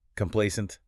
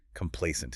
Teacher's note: The stress is on the middle syllable. Play-A-O. Scent.